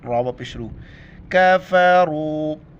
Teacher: را کو موٹا کر کے واو کے ساتھ ملائیں گے